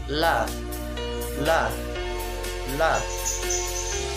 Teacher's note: Lenturan ujung lidah condong ke punggung lidah, inhiraf · punggung ujung lidah bertemu gigi muka yang atas. Sifatnya nafas ditahan, jahar, suara tidak tercegah dengan sempurna dan tidak terlepas dengan sempurna, bainiyah.